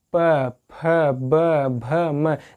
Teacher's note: प वर्ग में देखेंगे प, फ, ब, भ, म, जितने भी अक्षर इनको बोलने में हमारा जो ओठ है वो टच कर रहा है आपस में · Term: ओष्ठ